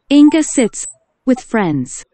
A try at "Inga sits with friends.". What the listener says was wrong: 오케이, 응가가 아니고 인가네요. 아이는 E, A는 아, 그래서 인가.